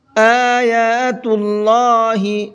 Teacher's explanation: یہاں پر حمزہ کو بھی کھینچ کر کے پڑھنا ہے اور یا کو بھی کھینچ کر کے پڑھنا ہے، کیونکہ دونوں حرفوں کے اوپر کھڑا زبر ہے، اور کھڑے زبر کو کھینچ کر کے پڑھا جاتا ہے۔